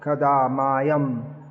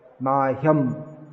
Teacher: The tendency in English is to drop the sound H, but it should be pronounced.